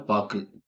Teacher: ஒரு மாத்திரையிலிருந்து அரை மாத்திரையாக குறைந்து ஒலிக்கிறதுதான் குற்றியல் உகரம்